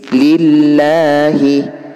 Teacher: kalau lafadz Allah diawali dengan harkat kasrah maka harus dibaca tipis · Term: tarqiq